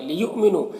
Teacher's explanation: یہاں پر حمزہ ساکنہ ہے واو کی شکل میں تو جھٹکا لگے گا، نو میں واو مدہ ہے۔